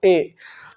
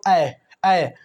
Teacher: आप ए बोलो ए, तो आपके कंठ में कंपन होगा और आपकी तालु टच होगी। ए बोलो ए, तो आपको देखो कंठ में कंपन होगा और तालु टच होगा, तो ए कंठ तालु।